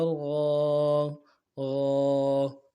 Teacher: کھڑا زبر کو ایک الف کی مقدار میں کھینچیں گے